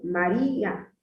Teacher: María, donde hace la mayor fuerza de voz, es en la I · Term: sílaba tónica